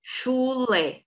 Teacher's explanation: A sílaba mais forte é o lé, que é a última. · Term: oxítona